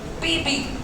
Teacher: पीबी में दोनों होंठ साथ चिपक कर फिर अलग होते हैं, इसलिए उनको प्लोजिव्स कहते हैं।